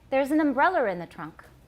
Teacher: He had an intrusive R.